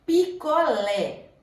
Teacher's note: A sílaba tônica é o lé, é a última sílaba, ela é oxítona.